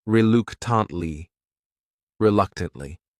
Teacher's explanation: This word has 4 syllables, and the stress is on that second syllable. That third syllable also has that schwa.